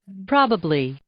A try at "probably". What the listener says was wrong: Pra, bukan pro, okay? Probably.